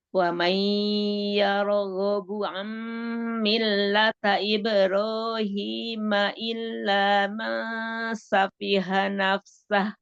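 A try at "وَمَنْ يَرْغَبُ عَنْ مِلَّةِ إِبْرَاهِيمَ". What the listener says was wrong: Milati bukan milata. Kalau milati sama milata kan beda artinya.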